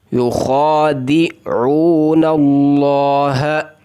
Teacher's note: یخادعون اللہ، حروف مدہ واو کو ایک الف کے برابر، ہا کو سینے سے نکالنا ہے، لام کو پر پڑھنا ہے.